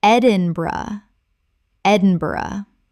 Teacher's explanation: Three syllables with the bur collapsing to bra.